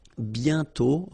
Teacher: And then the final T is not pronounced.